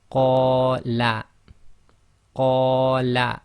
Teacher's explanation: So that's 2 long on the qa, and la is 1 long.